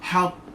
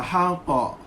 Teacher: Lambat sikit qalqalah kubra